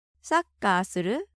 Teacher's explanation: the new word suru with rising intonation, so it seems it's a question